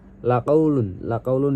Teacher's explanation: huruf qa-nya dibaca memantul ringan karena sukun dihukumi qalqalah sugro. Kemudian ada laqaulun juga dibaca alif lam qamariyah karena lamnya dibaca jelas karena bertemu dengan huruf qamariyah yaitu qaf.